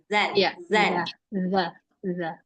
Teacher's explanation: Jadi mengucapkan zal lidahnya harus keluar ya Mbak ini